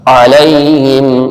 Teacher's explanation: عین حلق کے درمیان سے، اور یہ یا لین ہے، کھینچنا نہیں.